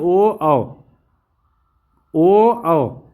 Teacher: कंठ और ओष्ठ दोनों का उच्चारण का प्रयोग हो रहा है तो कंठोस्थ हो जाएगा ना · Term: कंठोष्ठ